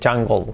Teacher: La E se cambia por la última consonante, por la L, y se pronuncia eso, jungle. Ocurre que el sonido L es tan fuerte, que se nos come el sonido de la E prácticamente